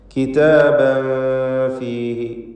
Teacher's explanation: ഇവിടെ തൻവീനിന് ശേഷം ഫാ വന്നതുകൊണ്ട് ഇഖ്ഫാ ഹഖീഖി നൽകി മറച്ച് മണിച്ചുച്ചരിക്കുക. മണിക്കലിൽ തർക്കീഖ് വേണം.